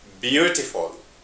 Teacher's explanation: the stress is in the first syllable